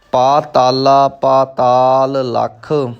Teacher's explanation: ਪਾਤਾਲ ਦਾ ਆਖਰੀ ਅੱਖਰ ਲੱਲਾ ਹੈ ਅਤੇ ਲੱਖ ਦਾ ਪਹਿਲਾ ਅੱਖਰ ਲੱਲਾ ਹੈ। ਇਸ ਲਈ ਥੋੜ੍ਹਾ ਜਿਹਾ ਰੋਕ ਕੇ ਆਪਾਂ ਅੱਗੇ ਚੱਲਾਂਗੇ।